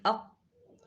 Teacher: کچھ حروف ایسے ہیں جن میں آواز سانس کے بند ہونے کی کیفیت بالکل صاف سمجھ آتی ہے، جیسے قاف ہم پڑھیں، قاف میں اق بالکل بند ہے، سانس بالکل بند